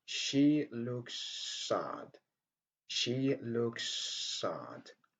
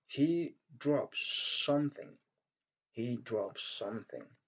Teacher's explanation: Quand vous avez un mot qui se termine par le son se et un autre qui se commence par le son se, ça nous donne un long son. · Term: un long se